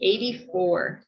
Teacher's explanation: american some might say michigan accent where i pronounce the t like a d